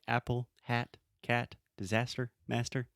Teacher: the first sound is that really open ah sound that we have in English